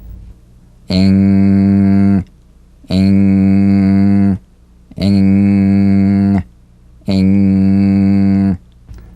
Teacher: Now, the use of the NG is more complex, and there's a common confusion about the correct use of the G or K drum beat following the NG. So, practice the final NG with no drum beat as the tongue leaves the soft palate at the end of the word.